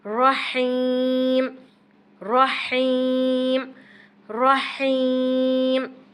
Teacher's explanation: را کو پر اور حلق سے ہا کو نکالتے ہوئے کھینچ کر